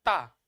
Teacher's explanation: तो हमारे जो दांत है जीभ से लड़ते हैं